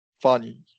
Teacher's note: you're going up in pitch for the first, and then you're doing the second syllable very quickly. It's no stress.